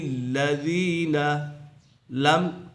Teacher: لم یکن الذین کفروا، لم یکن الذین، لم یہاں پر اظہار شفوی ہے، میم ساکن کے بعد حروف با اور میم کے علاوہ کوئی بھی حرف آ جائے تو میم ساکن میں اظہار شفوی ہوگا، یعنی غنہ نہیں کریں گے